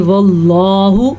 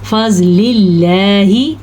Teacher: اللہ کے نام سے پہلے زبر آ جائے، جیسا کہ واللہ میں نے موٹا کر کے پڑھا ہے، فضل اللہ میں نے پتلا کر کے پڑھا ہے، تو یہ ہے اللہ کے نام کو باریک پڑھنے کا قاعدہ۔